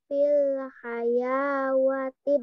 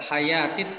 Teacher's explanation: Hayatid, bukan wawunya nggak usah dibaca, wawunya dianggap nggak ada. Jadi huruf wawunya tidak dibaca